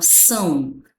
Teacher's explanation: Então, quando eu pronuncio essa sílaba aqui, ó, você vai observar que o a abafa o som do o. Inclusive o nem tem som de o que eu falo são. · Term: semivogal